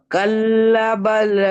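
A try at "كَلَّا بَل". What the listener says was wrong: কাল্লা একটা টান দিয়ে পড়েন কাল্লা বাল্লা এখানেও লা টানাবে দুটো সব একই রকম দেখতে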